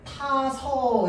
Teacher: 그래서 타아서라고 굳이 끊어서 하지 않고 어떻게 타서 이렇게 발음합니다. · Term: 아어 탈락